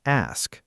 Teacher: Some learners accidentally swap the S and K, so it comes out as axe instead of ask.